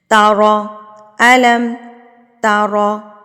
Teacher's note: را کے اوپر زبر ہے تو اس کو آپ نے ہیوی کر کے پڑھنا ہے۔ ہونٹوں کو تھوڑا پاؤٹ کر لیں، تھوڑا سا گلائی کی طرف لے کے جائیں اور آپ را کو پڑھیں۔